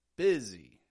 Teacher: the s in busy isn't making a regular s kind of sound at all is it sounding a little bit more like a z it's getting some voice sound